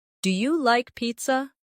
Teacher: Make sure your voice rises at the end. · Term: intonation